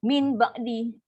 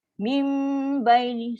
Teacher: Ingat bila ganti dengan mim, bunyi nun ni dah tak ada dah. Dia jadi pada ba. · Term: iklab